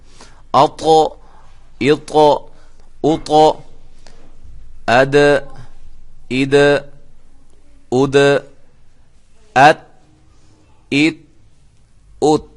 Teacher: زبان کے کنارے اوپر والے دانتوں کے مسوڑوں سے ادا ہوتے ہیں